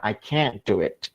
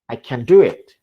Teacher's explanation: Dua penekanan itu pada can-nya dan juga pada kata kerjanya akan mempengaruhi makna. Penekanan pada kata kerjanya berarti dia berarti bisa.